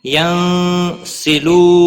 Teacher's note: نون ساکن کے بعد حرف اکفا کا سین آیا ہے، اخفا حقیقی ہوگا، غنہ کے ساتھ پڑھیں گے۔